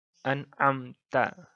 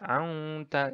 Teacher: Izhar adalah membaca huruf nun mati dan tanwin dengan jelas dan terang tanpa dengung sama sekali